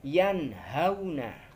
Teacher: Nun sukun bertemu dengan huruf ha yang terletak di pangkal tenggorokan kita.